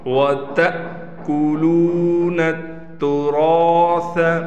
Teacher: تو اس الف کے اوپر آپ دیکھیں یہ آپ کو نظر آ رہا ہے ساکن، اب یہ الف نہیں رہا بلکہ حمزہ بن گیا، اور حمزہ ساکن جھٹکے کے ساتھ پڑھا جاتا ہے۔